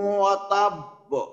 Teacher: আবার তার সাথে কি হইলো, এখানে একটা স্পেশাল জিনিস আছে, ওই কলকলা হরফের উপরে তাসদিদ আছে, যার কারণে একটু বেশি কলকলা হবে। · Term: ভারী কলকলা